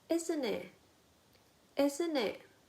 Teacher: Rising intonation on isn't it, isn't it? A tag question.